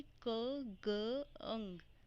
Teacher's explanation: हमारा जो टंग का बैक पार्ट है वो सॉफ्ट पैलेट के साथ टच करेगा।